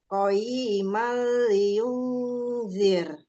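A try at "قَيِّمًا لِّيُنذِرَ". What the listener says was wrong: Nah, di sini bukan qoyima, iya-nya nggak ada matnya, tidak ada tanda panjang. Jadi gimana? Karena dia ada tasydidnya, berarti ya-nya itu sesungguhnya Bu, yang pertama disukunkan dulu. Qoi, ya? Qoi.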